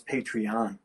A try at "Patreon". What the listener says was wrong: Well, Patreon. You're putting a lot of emphasis on the syllable.